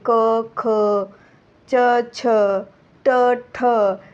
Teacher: यांच्या उच्चारणामध्ये काय होत आहे की स्वरतंतूनमध्ये कंपन होत नाहीये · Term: अघोष व्यंजन